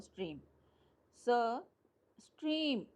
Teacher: हालांकि देखो कॉन्सोनेंट इसमें कितने आए हैं, स ट र। ओके, पर ई एक है, वावल साउंड वन है और एक ही पार्ट है। प्रोनाउंस भी हम देखो दो पार्ट में नहीं करे, जैसे मैंने आपको प्रोनाउंस करके बताया था जियरो, हियरो, बट स्ट्रीम एक ही बार में बोला, नो पार्टीशन। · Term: मोनोसिलेबिक